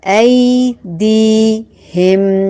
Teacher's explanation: ایدیہم ایک یائے لین ہے اور ایک یائے مدہ ہے، ایک کو لمبا نہیں کرنا، ایک کو لمبا کرنا ہے. یا ساکن سے پہلے جب زبر آ جائے تو وہ لین ہوتا ہے.